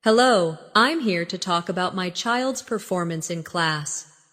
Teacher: Stress performance. So, it's clear what you're discussing.